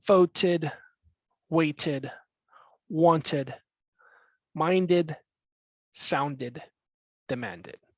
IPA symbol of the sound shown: id